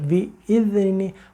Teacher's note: ذرا سی زبان دانت کے نیچے نکال کے لائیں گے، یہ ذال ہو جائے گا، بِإِذْنِ، اگر زبان اندر رہ گئی، مسوڑے سے ٹچ ہو رہی، بِإِذْنِ، تو وہ زال پڑھا جائے گا اور وہ ہمارا پڑھنا پھر مناسب نہیں۔